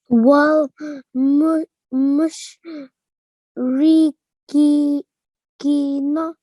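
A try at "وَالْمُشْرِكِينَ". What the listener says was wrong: Yeah, prolong the kaf for a little longer. Kina.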